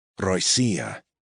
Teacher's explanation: accent on the second syllable